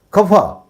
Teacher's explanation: और जो नुक्ता वाला लगा है, जैसे वह हमसे खफा है, खफा, तो फ कहेंगे तो ओट सटेगा नहीं, हवा निकल जाएगा बीच से